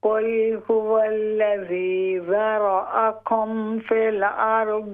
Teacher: ہاں جی پھر پڑھیں، اور یہ جو را ہے را، اس کو موٹا کرنا ہے ہم نے، را والا را، ہاں جی ذال کے بعد را آ رہی ہے نا، یعنی ذال باریک ہوگی، را موٹی ہوگی، پھر جو اس کے بعد الف حمزہ آ رہی ہے وہ باریک ہو جائے گی۔